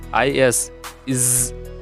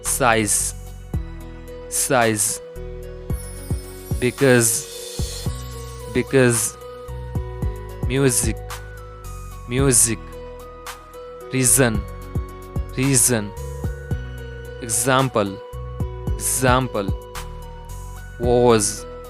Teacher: दोनों दांतों को ऑलमोस्ट मिलाना है और दांतों के बीच टंग, जीभ को लाना है और z बोलना है. बोलते टाइम वोकल कॉर्ड वाइब्रेट करेगा और बाहर की तरफ थोड़ी हवा निकलेगी. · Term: Z sound